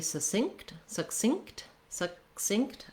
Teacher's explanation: i do need to stop that first k sound um i don't need to release it but i don't want to drop it